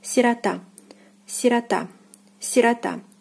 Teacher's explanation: The stress is on the last syllable, and O is again unstressed and is pronounced as A